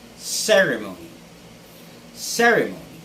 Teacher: the stress should be on the first syllable